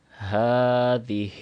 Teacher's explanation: ہا کو 2 سیکنڈ لمبا کرنا ہے، اوپر کھڑی زبر ہے، اور ہا کی ادائیگی بھی صحیح کرنی ہے۔